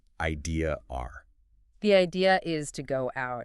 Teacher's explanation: if the next word starts with a vowel, they will suddenly insert an R to bridge the gap, even if there is no R in the spelling. So the phrase idea is smoothly becomes idea R. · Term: the unwritten R